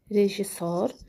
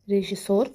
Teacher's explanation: Amma tələffüzdə s-nın biri düşür və rejissor formasında tələffüz olunur.